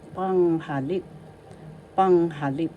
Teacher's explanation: First syllable pang, second syllable ha, third syllable lip. Panghalip. So the first and the third has the accent.